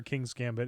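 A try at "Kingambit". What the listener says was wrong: There's no S. King Gambit. Not King's Gambit. King Gambit.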